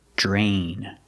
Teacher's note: we see DR together, it makes the j sound, like jump and juice. J. Plus the R, drain.